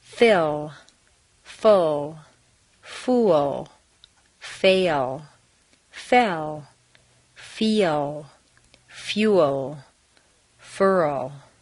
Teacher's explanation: Notice that each word has a tiny schwa after the L. This is to encourage your tongue to be in the right position to give your words a finished sound. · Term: final L's